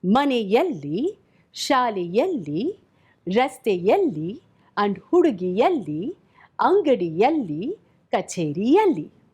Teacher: Both behave in a similar manner. They just take a glide ya before taking alli and become yalli.